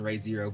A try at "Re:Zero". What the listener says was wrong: You said Ray Where's the I in that shit?